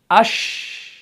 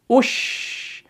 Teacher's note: लेकिन अमल क्या हो रहा है? जुबान का जो बीच वाला हिस्सा है ये स्लाइटली ऊपर उठता है। किसकी तरफ? ऊपर के तालु की तरफ, लेकिन चिपकता नहीं है। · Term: शीन